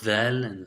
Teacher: the tongue should vibrate resulting in the buzzing sound